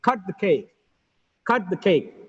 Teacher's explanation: cut is a verb it's a content word it gets stressed